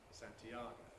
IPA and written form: ˌsæntiˈɑːgəʊ (Santiago)